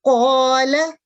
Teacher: قاف جو ہے 2 نقطوں والا وہ موٹا ہوتا ہے مفخم، اور جو دوسرا کاف ہوتا ہے بغیر نقطوں کے وہ ترقیق یعنی باریکی سے پڑھا جاتا ہے۔